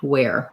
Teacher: think about it as being the W sound plus the air sound